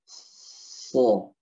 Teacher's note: Sod ya, lidah dijatuhkan. Yang ujung lidah ini bertemu dengan gigi seri bawah. Pangkal lidahnya naikkan. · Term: Huruf sod